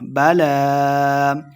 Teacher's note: بَلَىٰ لام کے اوپر کھڑی زبر اور مد ہے، تو ہم نے اس کو لمبا کرنا ہے